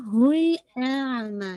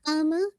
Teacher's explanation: पहले हमज़ा को वाज़े करेंगे फिर आइन को मर्ज करेंगे